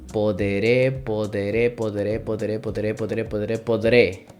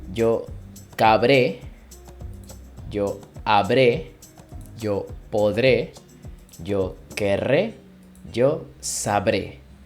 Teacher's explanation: the E in the middle is lost in the pronunciation, so we just omit it.